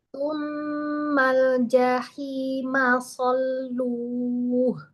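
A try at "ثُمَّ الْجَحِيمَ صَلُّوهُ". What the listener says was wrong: Tsummal jahima salluh. Tekanannya jangan ini Mi, jangan berbeda-beda di lam sukunnya. Tsummal jahima salluh.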